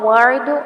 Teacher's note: عین ساکن پر جھٹکا نہیں آنا چاہیے